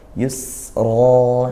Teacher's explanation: Nah karena dia waqaf maka Arnya tafkhim tebal